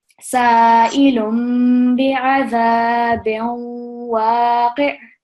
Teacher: we're going to produce a slight nasal sound, and we're also going to pause for 2 seconds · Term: waw mushaddad